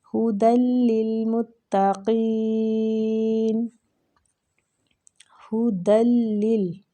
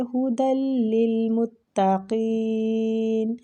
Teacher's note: دال کو لام کے ساتھ پھر آگے والی لام کے ساتھ ملائیں گے